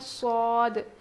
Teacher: زبان کی نوک نیچے کے دانت میں لگا کر پڑھتے ہیں